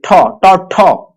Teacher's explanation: कहां से से निकल रहा है प्यारे बच्चों तो जल्दी बताइएगा ये जो निकल रहा है ठ यानी तालू से निकल रहा है